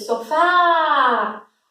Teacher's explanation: O Fá permaneceu mais tempo, então o Fá é a sílaba mais forte. Portanto, a última sílaba, oxítona terminada em A, tá?